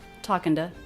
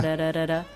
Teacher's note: The tongue bounces against the roof of the mouth. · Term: flap T